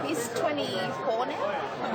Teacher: It's the Australian questioning intonation. So it really is like the rising intonation of a yes-no question, except that you find it on statements